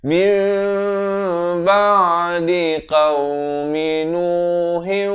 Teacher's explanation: Ditukarkan bunyi nun kepada bunyi mim. Daripada min ba'di kena baca mim ba'di. Tetapi mim itu kena panjangkan 2 harakat. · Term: hukum iqlab